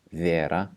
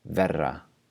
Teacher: notice how there's a long vowel and then just the single tap for the R